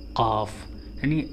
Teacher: زبان کی جڑ اور کوے کے آخری حصے سے حلق کی طرف جب نرم تالو لگتا ہے تو اس سے قاف ادا ہوتا ہے، قاف، یعنی بالکل حلق کے پاس سے، کوے کے پاس سے، یعنی کوے کے پاس سے نکالنا ہے۔